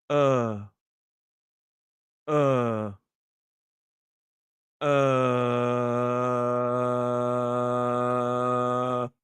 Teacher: Uh, your tongue is here in a mid position, slightly raised, but it's completely relaxed. The sound is created in the center of the mouth. It's not pulling forward. It's not pulling back.